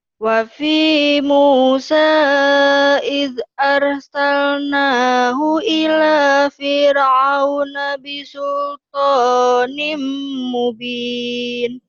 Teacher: Bacanya sih bisa, cuman lagunya nggak jelas ya. Hu-nya juga jadi panjang.